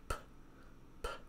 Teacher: They have the same mouth position, but the big difference is whether or not it's a voiced sound. The P is voiceless, so when you put your hand on your throat and say P, P, you shouldn't feel anything.